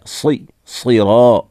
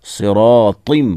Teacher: सिरात, साद है, सिरा, रा को भी मोटा, साद को भी मोटा। सिरातिम, ता को भी मोटा पढ़ेंगे और ता के नीचे 2 ज़ेर की तनवीन है।